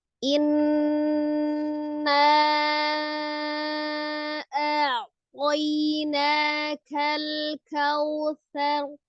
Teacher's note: Menahan, menekan 2 sampai 3 harokat dan memasukkan suara ke al-khaisum atau rongga hidung ya. Setiap nun tasdid dan mim tasdid itu hukumnya adalah wajibul gunnah, wajib didengungkan ya.